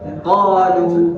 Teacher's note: Jadi hidung tidak ada suara qol. Jadi keluarkan di lisan saja. Pakai qalu tidak usah terlalu ditekan.